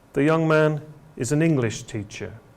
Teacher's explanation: we have statements the young man is an English teacher and you can hear that the stress is on the word English here not teacher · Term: falling tone